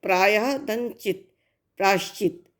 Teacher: जो विसर्ग था उसका शा हो गया है, ठीक। ये संधि के तीन भेद हैं। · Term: विसर्ग संधि